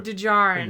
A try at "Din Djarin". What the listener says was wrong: Why put the D there if you're not even going to pronounce it? No, well, no, I know you're pronouncing it, but why put the D there at all if you're supposed to ignore it? It's a very subtle D.